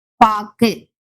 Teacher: பாக்கு என்ற சொல்லில் வரும் வல்லின உகரம் கு இறுதியில் வருவதால் அரை மாத்திரை பெறும். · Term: குற்றியலுகரம்